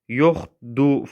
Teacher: yoxdur sözü yoxdu formasında tələffüz olunur. Burada r düşür.